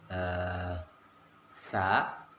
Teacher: Ketika kita mengucapkan sa, itu ujung lidah kita menempel pada ujung gigi kita, dan lidah kita sedikit dikeluarkan.